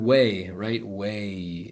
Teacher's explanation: It does go to an E sound when you say it at the end. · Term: diphthong